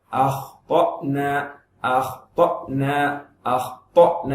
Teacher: அஹ் அஹ் அப்படின்னு சொல்லி கல்குலா பண்ணாதீங்க